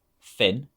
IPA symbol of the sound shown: f